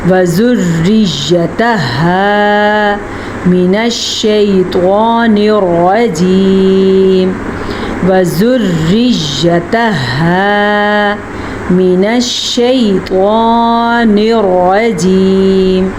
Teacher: طوا کو پر پڑھ لیجیے گا کیونکہ طوا حروف مستعلیہ میں سے ہے